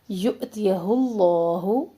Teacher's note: یؤتیہ حمزہ پہ ڈٹ کا سنگل حرکات ہے آگے، کوئی حرکت لمبی نہ ہو. پیش کو ہم لام اسم اللہ سے ملائیں گے، لام اسم اللہ کو موٹا پڑھیں گے. یؤتیہ اللہ پھر لام ساکن کا دھیان رکھے ہلنا.